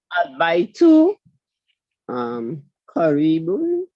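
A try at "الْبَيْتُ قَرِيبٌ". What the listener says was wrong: Perfect. The house is near. Perfect.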